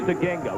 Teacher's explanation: He told us Zaginga, with the emphasis being on the second syllable.